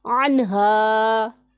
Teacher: الف سے پہلے زبر ہے تو الف مدہ، اسے ایک الف کے جتنا ہم لمبا کر کے پڑھیں گے